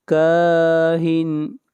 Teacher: کاف کو کھینچ کر پڑھیں گے، ایک الف کے برابر